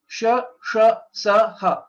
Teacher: There's a free flow of air while pronouncing all these four letters, and hence these are called Ushma Varnaha.